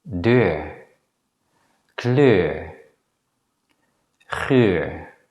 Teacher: The vowel e is a short vowel that does not appear in English. The way e is pronounced is similar to the schwa sound e, but the lips are more protruding when the vowel e is pronounced. If we use a dot to represent the vowel e in the diagram, we can place it here. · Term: longer version of the vowel